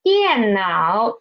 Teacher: the third tone is half third tone as usual